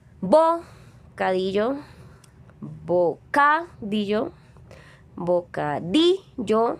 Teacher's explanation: El acento va en la penúltima sílaba, en la di. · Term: sílaba tónica